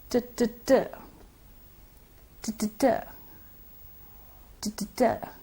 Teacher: The air comes rushing out of the mouth with some explosive noise, forming a plosive.